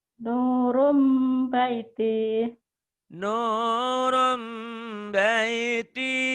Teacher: Nun mati atau tanwin ketemu ba, iklab. Bunyi nun mati itu kan bunyinya N. Berubah menjadi M, tapi bindeng.